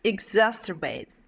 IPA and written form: ɪɡˈsæsərˌbeɪt (exacerbate)